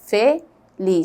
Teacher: Tem a indicação de sílaba tônica, ou seja, o lis é a mais forte.